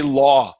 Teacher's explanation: the ah sound in law is a diphthong. We are changing the position of your mouth.